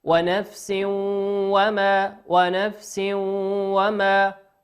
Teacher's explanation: تنوين أتى بعده حرف الواو والواو من حروف الإدغام بغنة يغن بمقدار حركتين